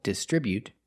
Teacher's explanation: They distribute their products with a stress on the second syllable.